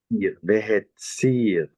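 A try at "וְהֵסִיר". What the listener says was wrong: Not hetsir, but hesir.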